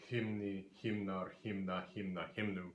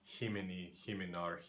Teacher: So here in the dative singular and then all of the plural cases, the ending adds another vowel, so another syllable, and we drop that vowel in the second syllable, that I, so that we keep a two-syllable trochaic word, which is what Old Norse likes its vocabulary items to be.